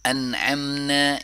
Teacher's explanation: انعمنا، یہاں پہ دیکھیں سٹاپ نون جو ہے، نون ساکن، اس میں اظہار ہو رہا ہے کیونکہ نیکسٹ جو حرف ہے وہ ایک گلے سے ادا ہونے والا حرف ہے